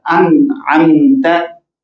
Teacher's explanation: नून साकिन के बाद आइन, अब नून जाहिर करके पढ़ा जा रहा है